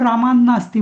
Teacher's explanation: संधीमुळे तो त नंतर न आल्यामुळे तो त चा न झालाय